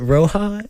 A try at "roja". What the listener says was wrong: Roja, yeah. Listen, you are Hispanic. Why can you not roll your R's?